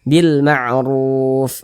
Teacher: Ini huruf ra nih di atasnya ada tanda baca dhammah, juga dibaca tebal, juga dibaca tafkhim, sehingga pangkal lisan kita tuh naik terangkat ke atas ketika kita mengucapkannya.